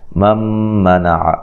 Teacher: یہاں نون ساکن کا ادغام ہے مع الغنہ